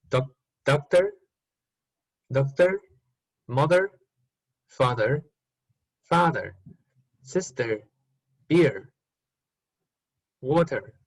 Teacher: r is present okay this is different from the standard pronunciation · in the case of Northern Irish, R is rhotic, so we have to make it.